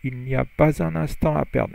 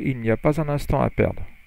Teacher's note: Here, there's a liaison between the S and the U.